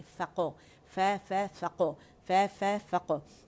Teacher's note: काफ को हमने जब साकिन किया तो मोटा कलकला करेंगे